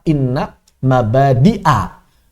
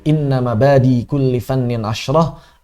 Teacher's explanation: Namun hamzahnya ini dihadzaf, dihilangkan untuk menyesuaikan susunan syair, untuk meringankan pelafalan dan menyesuaikan susunan syair, dan itu boleh dalam ilmu syair atau ilmu arud istilahnya.